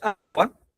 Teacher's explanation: la sílaba más fuerte pues es la A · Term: sílaba tónica